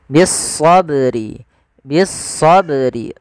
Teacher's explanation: ba yang berharakat sukun maka ini kita namakan dengan bacaan Qalqalah Qalqalah yaitu bacaan yang dia memantul